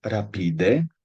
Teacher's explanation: no es una r vibrante al principio de palabra